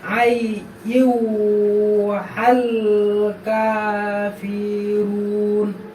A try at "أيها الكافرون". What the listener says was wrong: হয় নাই, এখানে তোমার তিন আলিফ বাদ হবে। কাফির, বাংলাটা খেয়াল করো, দেখো তিনটা কিন্তু মাদের চিহ্ন আছে। কাফিরুন।